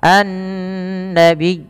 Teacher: Nun sendiri juga ada bacaan guna maka ia ditahan sepanjang dua harakat